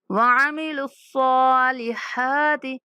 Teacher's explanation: صاد اور ہا کے اوپر کھڑا زبر ہے اس لیے ہم دونوں کو لمبا کریں گے۔